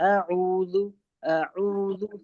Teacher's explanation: دیکھیے یہ بہت غلطی ہوتی ہے، سبھی بہت سارے لوگوں کی اعوذ آ کو کھینچ دیتے ہیں. آ پہ زبر کی حرکت ہے تو ہم اس کو کھینچیں گے نہیں، بہت آرام سے جلدی نہیں. اعوذ اعوذ صرف عین کھینچے گا.